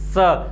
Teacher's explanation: जीवा को आगे बढ़कर जब आप दांतों से स्पर्श करवाते हुए जो स का उच्चारण बोलोगे, एक सीटी मारती हुई सी एक आवाज आएगी स। तो ये जो स होता है ये दंत्य स होता है।